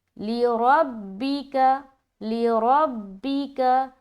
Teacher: रा अक्सर बारीक हो जाता है। इसको मोटा करेंगे।